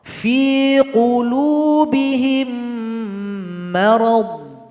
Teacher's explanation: Kalau ada mim sukun berjumpa dengan huruf mim, maka dibaca idgham mimi, dibaca lebur serta berdengung. Contoh, fi qulubihim marad, dibaca berdengung.